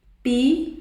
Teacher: Qual é a sílaba mais forte? Não é o lé?